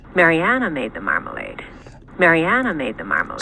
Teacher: this person has a low star on marmalade, and it's in the right spot for a pitch accent on marmalade, which is the first syllable, the stress syllable on marmalade